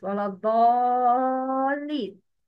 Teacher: It's مد لازم. Long sound with 6 feet.